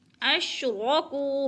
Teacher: اشرکو کو پہ وہ مدہ ہے، وہ ساکن سے پہلے کاف کے اوپر پیش ہے تو وہ مدہ یعنی ایک الف کے برابر کھینچ کر پڑھنا ہے